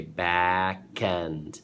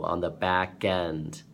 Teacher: Now some linking, when you say back end, but the K will shift over to the end